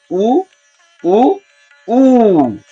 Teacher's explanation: ये 3 लिखा हुआ है, तो ये 3 क्या व्यक्त करता है? ऊ को 3 गुना समय देना, तो इसकी प्लुत संज्ञा होती है।